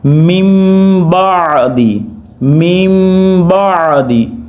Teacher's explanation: تو کیسے پڑھیں گے؟ من بعدی، اخفا بھی ہوگا، گننا بھی ہوگا اور نون کی آواز کو میم میں بدل دیا جاتا ہے۔ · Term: اقلاب